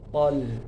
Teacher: ini th juga tebal cuma hati-hati lamnya tipis thol. Thya tebal lamnya tipis.